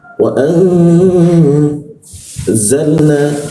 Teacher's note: Ketika ada huruf nun bertemu za, maka za-nya itu dipantulkan, didengungkan, ditahan 2 ketukan.